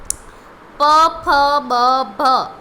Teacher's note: બોલતા ઓષ્ઠ અડી જાય છે, તમારા હોઠ અડી જાય છે, એટલા માટે ઓષ્ઠ્ય.